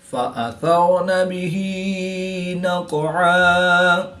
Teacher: فأثرن به نقعا، را ساکن سے پہلے سا پر زبر ہے تو را کو پورا یعنی موٹا پڑھیں گے